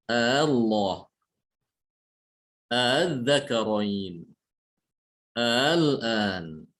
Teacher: boleh dibaca dengan mentashilkan hamzah yang kedua. Dibacanya Allah.